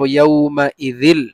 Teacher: ইদগামে বেলা গুন্না মানে আমরা গুন্না করব না শুধু মিলিয়ে পড়ব যিল আমরা এভাবে পড়ব না পড়ব ইয়াউমা ইযিল স্বাভাবিকভাবে মিলিয়ে পড়ব